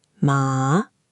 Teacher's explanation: The third tone falls and then rises, like a dip.